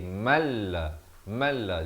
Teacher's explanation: Maka jika huruf lam atau huruf ra, jadi hukum idgham bila gunnah, masuk tanpa dengung. Daripada man la jadi malla.